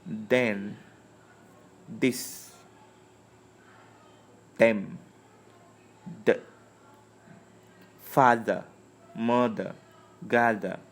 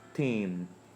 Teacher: the voice has the vibration in it and the voiceless doesn't have that vibration in it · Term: voiced